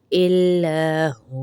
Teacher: اور یہ جو جیم لکھا ہوا ہے یہاں پہ ہم وقفے جائز ہے، یعنی وقف کریں گے، الا ہوا نہیں پڑھیں گے، واو کو ساکن کر دیں گے، الا ہو پڑھیں گے